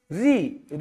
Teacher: ऋ के उच्चारण के लिए आपको मूर्धा का सहारा लेना पड़ेगा